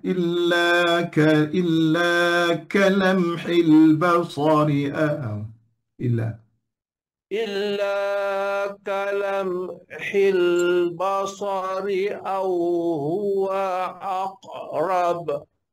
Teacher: Illa panjang agak tegak sikit pada mat tu, pada mat.